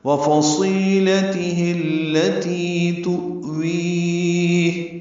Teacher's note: واو ہونٹوں کی نہ تمام گلائی سے ادا کریں گے، صاد پر پڑھیں گے، الف مدہ ہے تو حرکات لمبا کریں گے۔